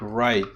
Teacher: is a vowel that is a sequence of two vowels and the quality of the vowel changes throughout its production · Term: diff thong